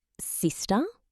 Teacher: just with a slight rising intonation at the end